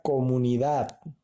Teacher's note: En la palabra comunidad, ¿no? La última sílaba lleva la mayor fuerza de voz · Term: sílaba tónica